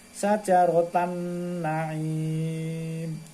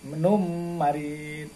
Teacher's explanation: idgham itu artinya memasukkan suara ke huruf depannya bihunnah dengan berdengung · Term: idgham bihunnah